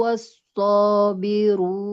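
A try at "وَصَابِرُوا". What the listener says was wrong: Tidak wasso. Di atas shotnya tidak ada tasydid ya. Nggak boleh wasso. Wasso biru. Tanpa diberikan penekanan. Wasso biru. Dua harokat.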